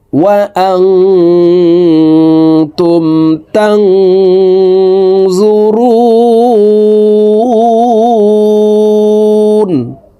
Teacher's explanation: রু তিন আলিফ টেনে নুনকে সাকিন করতে হবে, কারণ মদের হরফের বামের হরফে ওয়াকফ হইলে মুদ্দা আরজি তিন আলিফ টানিয়া পড়িতে হয়।